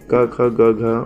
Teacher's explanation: क ख ग घ वाली ये जो है वो पूरी कंठ से उच्चारित होती है